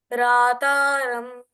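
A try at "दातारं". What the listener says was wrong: Not ra. Dataram.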